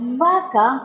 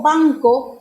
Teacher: que es V y es dentilabial, lengua detrás de los dientes, o le digo banco, que es labial, y lo pronuncio solo con los labios